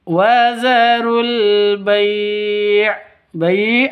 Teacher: Terus alif lam di sini ada sukunnya, ada tanda sukunnya berarti alqamariyah seperti itu. Wazarul bai bai panjang boleh dua boleh empat boleh enam ketukan. Karena mad lin atau mad layyin seperti itu.